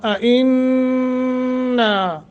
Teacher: نون مشدد ہے، غنہ کریں گے، اور آگے الف ہے، 1 سیکنڈ کی مد کریں گے۔